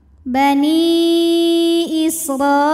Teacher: ro dibunyikan secara tafkhim karena berbaris di atas yaitu baris Fath ha maka ro dibunyikan dengan tebal